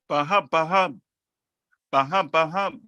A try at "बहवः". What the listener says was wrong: It is Baha and then there is a Vaha.